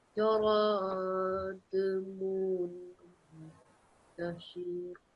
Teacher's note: This needs to be prolonged for 2 seconds because that's a meme mushaddad. So you need to make a meme ghunna sound for 2 seconds.